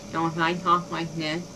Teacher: all of the sound is going through my nose